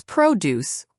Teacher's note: produce with stress on the first syllable